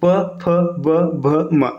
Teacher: बोल के देखिएगा जैसे आप प फ ब भ उच्चारित करेंगे आपके दोनों होट आपस में टच होंगे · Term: ओष्ठ